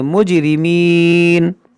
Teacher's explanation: یہ جیم میں قلقلہ کریں گے